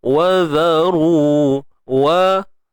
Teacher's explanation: Zal ni jangan lupa keluar ujung lidah sikit.